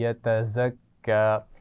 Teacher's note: यतज़क्का में ज़ा है जिसकी आवाज़ में सख्ती या सीटी होनी चाहिए, ज़ाल नहीं है